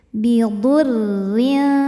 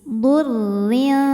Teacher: maka cara bacanya tipis ya jadi Walaupun ada tasydid jangan ditebelin dulu